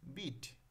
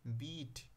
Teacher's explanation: প্রথম শব্দটিতে হস্র ই ধ্বনি হস্র আর দ্বিতীয় শব্দের হস্র ই ধ্বনি দীর্ঘ